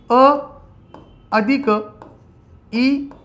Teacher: यांना कंठ अधिक तालू दोघीचा वापर करावा लागतो म्हणून त्याला कंठ म्हणता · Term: कंठतालव्य